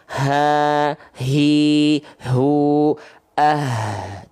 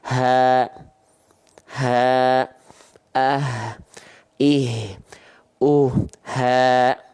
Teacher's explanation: makhraj huruf H besar itu dari aqsol halqi tempat keluarnya bukan dari dada tapi aqsol halq tenggorokan paling bawah atau sering kita sebut dia dengan pangkal tenggorokan pangkal tenggorokan ya